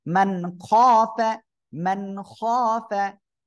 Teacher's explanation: ওকে, এই যে দেখেন, এখানেও দেখেন, এই যে নুন সাকিন, নুন সাকিন এরপরে ইজহারের অক্ষর খ আসছে, স্পষ্ট করে পড়বেন।